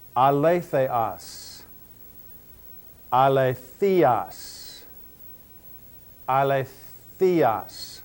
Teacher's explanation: Notice that I'm putting the accent over the diphthong epsilon iota.